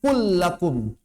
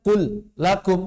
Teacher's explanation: wajib idgham tidak ada tawar-menawar wajib idgham maka demikian pula lam lam fi'il seperti contohnya kullakum enggak dibaca qul lakum enggak langsung qulakum lam pertamanya langsung dianggap hilang langsung masuk ke tasydid